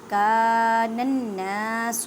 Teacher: نون مشدد غنہ اور ایک الف کی مقدار میں کھینچ کر پڑھیں کیونکہ الف مدہ کا قاعدہ ہو رہا ہے.